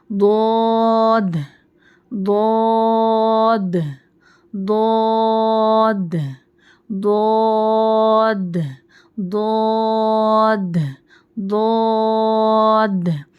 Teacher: زبان کی نوک کو فولڈ مت کیجیے، زبان کو ٹیڑھی مت کیجیے، اسٹریٹ رکھیے اور اس کے سائڈس اوپر داڑھوں کو لگا دیجیے ضاد کو پڑھتے وقت. ٹھیک ہے، تو اور اس میں موٹی آواز آنی چاہیے.